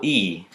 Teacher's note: the vowel that is made when the tongue is close to the top of the mouth and far to the front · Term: the vowel E